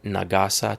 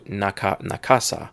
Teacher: But if you change things just a little bit, take Nagasa and you take the G, g, g, g, g, g, and you turn it into a K, because the G and K are the same. One uses the vibrations of your vocal cords, the other one does not.